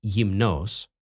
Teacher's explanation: Lastly, there are 3 favorite words where he misplaces the emphasis on the second to last penultimate syllable, even though the accent mark is over the last ultimate syllable. The adjective naked is not pronounced gumnos.